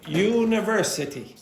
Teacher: So again, secondary stress on the first syllable